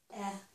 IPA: ɛ